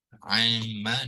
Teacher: Nun yang sukun ni telah dimasukkan di dalam mim, ya. Amma, dia nun tu di dalam ni dah diidghamkan sebab dia membabitkan idgham ma'al ghunnah.